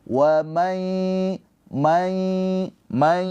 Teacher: Udah dileburkan ke huruf ya. Ditahan dua harakat sambil dengung keluar suara dari hidung. Wai mai may tuh kalau kita pencet hidungnya ada bunyi kan ya. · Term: Idgham bighunah